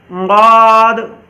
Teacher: ضاد کے اندر آواز دراز ہوتی ہی ہے، کیونکہ ضاد کے اندر جو ہے وہ صفت استطالت ہے